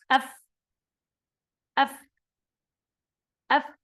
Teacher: الشفة السفلى مع أطراف الثنايا العليا، يعني إذا التصق طرف السنتين الفوقيتين هذا مع بطن الشفة في الأسفل، هنا ننطق الفاء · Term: حرف الفاء